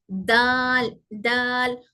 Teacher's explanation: दाल में जबान की नोक से ही निकल रहा है दाल भी, लेकिन सिर्फ ऊपर के दांत के अंदरूनी किनारे, अंदरूनी किनारे इन जहां से हमारे जड़ जड़ स्टार्ट हो रहे हैं, मसोड़े, वहां पर टच होकर।